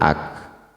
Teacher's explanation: hu-nya ha besar, Allahu, kemudian alif kaf ak, kafnya sukun, a ketemu kaf sukun ak, bukan aik ya